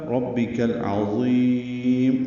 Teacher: میم کو معروف طریقے سے جلدی ادا کریں گے، ربک میں رو پر پڑھیں گے، با سے ملائیں گے، با کو باریک اور جلدی ادا کریں گے معروف طریقے سے، ربک، کاف باریک ہے اور العظیم کے لام سے ملانا ہے، ربک العظیم۔ لام ساکن پہ اظہار قمری ہے، عین وسط حلق سے ادا ہوگا، ضا پر پڑھیں گے اور ضا کو لمبا کریں گے، میم ساکن پہ وقفاً اظہار ہوگا، ربک العظیم، اور یہ مد عارض سکون ہے اس لیے لمبا کیا ہے۔